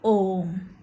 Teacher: जैसे आप बोलते हैं ओम तो वहां पर जो ये ओ की ध्वनि है वो तीन गुना लंबी खींचेगी और बोलेगा ओम। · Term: प्लुत स्वर